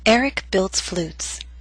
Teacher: Flutes had one syllable, so our voice glided down.